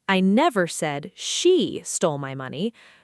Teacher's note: Stress on she means I implied someone else did.